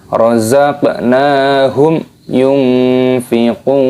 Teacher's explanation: Di sini ada mim sukunnya bertemu dengan huruf ya, maka hukumnya dibaca idhar syafawi. Cara membacanya jelas, tidak boleh didengungkan.